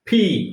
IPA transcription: piː